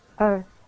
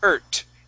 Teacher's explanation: when that T and the H are together, we put our tongue between our teeth and we say that th sound.